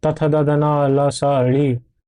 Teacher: तो तथ द धन ल स ऋ इनका जो उच्चारण स्थान है वो दंत है